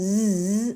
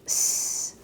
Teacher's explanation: in English, we tend to buzz our Z's like a Z sound, but in Spanish, it's just like a S, so it's S.